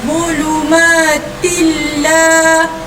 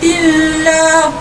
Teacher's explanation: Masuk tanpa dengung. Jadi tanwin ni masuk terus ke dalam huruf lam tanpa mendengungkan bacaan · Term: idgham bila gunnah